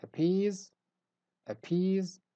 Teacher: so in the first word we stress the syllable peas